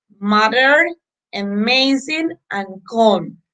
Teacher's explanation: the sound m the point of articulation is bilabial the voicing is voiced the manner of articulation is nasal